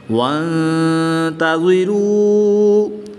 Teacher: تا حروف اخفا میں سے ہے، تو یہاں پر اخفا ہوگا یعنی غنہ زمانی کر کے پڑھیں گے۔ غنہ زمانی غنہ ہونے میں محتاج ہوتا ہے، یہاں پر نون ساکن کے بعد تا حروف اخفا میں سے ہے، تو یہاں پر حروف نون ساکن حروف اخفا کا محتاج ہے غنہ ہونے میں، تو اس لیے یا اس پر غنہ زمانی کر کے پڑھیں گے۔ · غنہ زمانی غنہ ہونے میں محتاج ہوتا ہے، یہاں پر نون ساکن کے بعد تا حروف اخفا میں سے ہے، تو یہاں پر حروف نون ساکن حروف اخفا کا محتاج ہے غنہ ہونے میں، تو اس لیے یا اس پر غنہ زمانی کر کے پڑھیں گے۔ نون مشدد میں ہمیشہ غنہ ہوتا ہے، تو یہاں پر غنہ آنی ہوگا جو غنہ ہونے میں کسی کا محتاج نہیں ہے۔